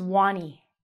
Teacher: They're learning how to get the R out. So instead of saying R, they're going to say W.